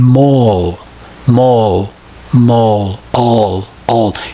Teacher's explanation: If you try and pronounce it, you will find that the tongue hardly ever touches the top of the back of the teeth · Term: dark L